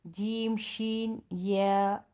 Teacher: زبان کی جو بیچ کا حصہ ہے اوپر تالو کے بالکل بیچ میں لگائیں گے